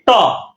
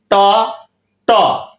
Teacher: ট, দেখেন ট ট দাঁতের মূলে লাগলো, তার মানে পিছনে মানে জিহ্বার মাথাটা দাঁতের গোড়ায় লাগবে, দন্তমূলীয় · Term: পশ্চাৎ দন্তমূলীয়